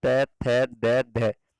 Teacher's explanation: दंतीय ध्वनियां, जिनका उच्चारण में जीभ ऊपर के दांतों को छूती है